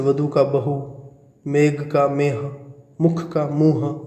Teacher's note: और महाप्राण व्यंजनों जैसे ख घ थ ध और भ ह का, भ का ह में रूपांतर हो गया, ये जो ख घ थ ध भ थे उनका ह हो गया